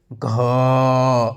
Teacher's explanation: घ का उच्चारण स्थान कहाँ से होता है? कंठ से होता है।